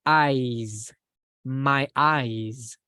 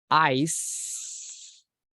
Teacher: when we talk about the organ, we use like a Z at the end